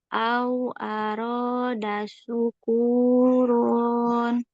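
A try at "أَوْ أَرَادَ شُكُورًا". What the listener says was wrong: Syukuron. Langsung shinnya juga kurang tafasyi. Gitu ya. Syukuron. Syukuron. Kunya Kunya 2 harokat.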